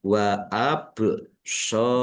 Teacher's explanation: shod fathah alif mad thobi'i panjang dua harakat. Mim sukun bertemu dengan huruf wau.